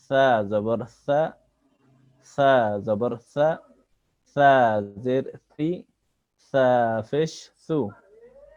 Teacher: সা জিবার আগা সামনের উপরের দাঁতের আগা থেকে সা অক্ষর নরম ভাবে পড়তে হয়।